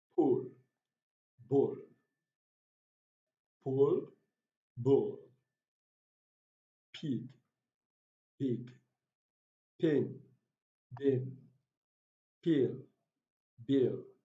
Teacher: The pa and the ba sound are called plosive sounds in English language. And apart from that, they are bilabial sounds and they are also voiced and voiceless. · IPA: /p/ and /b/